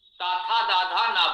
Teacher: ताथा दाधा ना बोलिए, इसका उच्चारण स्थान दंत है, जिह्वा दांतों को स्पर्श करेगी ही करेगी। जिह्वा दांतों को स्पर्श न करे तो आप ताथा दाधा ना नहीं बोल सकते